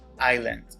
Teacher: This word has two syllables and the stress is on the first syllable. The word is pronounced island.